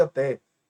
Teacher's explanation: até por exemplo que é pronunciado com e aberto